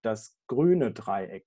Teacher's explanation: you have the accent on the adjective, and immediately after the stressed syllable, we find the drop down in F0 and the low flat F0 curve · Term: post-focal compression